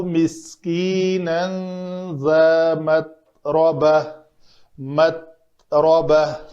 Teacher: تا کے لیے میں نے آواز کو بھی روک لیا، سانس کو بھی روک لیا، اس کو قلقلہ نہیں ہونے دیا